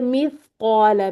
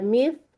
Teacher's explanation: ये सा में आप थोड़ी सी जुबान बाहर निकाल लेंगे तो हम्स भी रहेगा, और ये सीन वाली सीटी वो भी यहाँ पर नहीं आएगी, ठीक है। मिस कौ पे हम देख रहे हैं कि इसको मुफखम भी करना है।